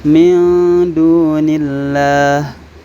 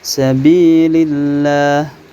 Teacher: didahului oleh huruf yang berharakat kasrah maka lemnya dibaca tipis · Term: lam muraqqaqah